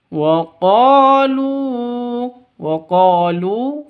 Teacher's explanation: Qo panjang dua ketukan karena ada alif diawali dengan fathah atau alif sebelumnya fathah panjang dua ketukan mad asli atau mad thabi'i.